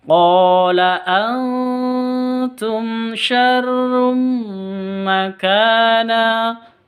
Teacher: mim mati bertemu dengan shin, ini jelas bacanya, terang karena idhar sawawi.